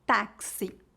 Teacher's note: o x pode ser pronunciado como KS